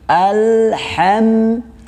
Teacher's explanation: du di sini antara ujung lidah dengan pangkal gigi seri atas. Jadi bukan du tapi du.